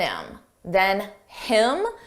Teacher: notice how you don't hear the H on him